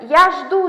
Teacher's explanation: undosh bilan tugayapti hamda oxiridagi u okonchaniyaga udareniya tushyapti